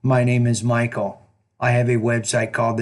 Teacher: One of the things I noticed is your tone. You're speaking in almost exactly the same tone throughout the whole response.